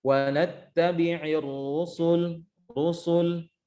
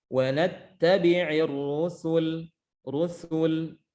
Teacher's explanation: Rusul, lah, sinnya tipis. Jangan dibiarkan tebal mengikuti harokat sebelumnya, tetapi ditipiskan.